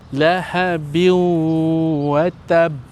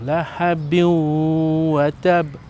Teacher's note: Jadi kita kena masukkan bunyi nun tu berserta dengung. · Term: idgham bighunna